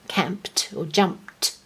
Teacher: When you have a voiceless sound like camp at the end of a word, you put ED, it sounds like a T, camped or jumped.